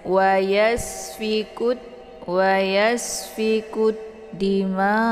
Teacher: Sin adalah sifatnya safir Jadi kalau safir itu tingkat desis anginnya itu lebih jelas kalau dibandingkan dengan yang sifatnya Hamas